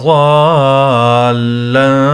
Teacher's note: ضالا یہ جو مد ہے یہ مد بڑا مد ہے، اس کو زیادہ کھینچنا ہوگا